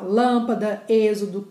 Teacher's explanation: todas as palavras em que a tonicidade cai em cima da antepenúltima sílaba não importa o final da palavra todos serão acentuadas tá e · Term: proparoxítona